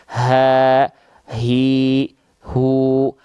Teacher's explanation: H besar itu dilafalkan dari namanya aqsol halqi pangkal tenggorokan yaitu area yang berwarna ungun ni tenggorokan paling pangkal paling bawah · Kalau H besar dia karakternya dia biasa. Nafasnya biasa. Ya. Kenapa? Karena dia dilafalkan dari pangkal.